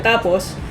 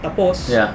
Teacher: I wouldn't say pause, but there's a bit of an emphasis on the first syllable